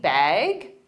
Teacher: simply bag with a rising intonation to show it's a question